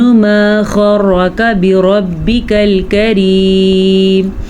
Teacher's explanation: غرک میں غین یہ ان حروف میں شامل ہے جن کو پر پڑھا جاتا ہے، اور را کو بھی ہم پر پڑھیں گے۔